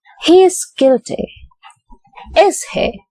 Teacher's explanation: he is guilty is in falling intonation